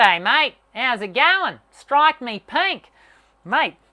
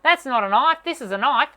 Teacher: as Aziz tends to sit really low and as a result a lot of our sound is directed through our nasal cavity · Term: nasalized